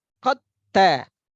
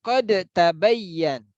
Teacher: tidak lagi kita datangkan sifat qalqalahnya